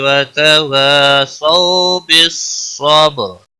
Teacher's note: را ساکن سے پہلے با ساکن ہے، اس کے پچھلے حرف کے اوپر زبر ہے، اس لیے را موٹی پڑھی جائے گی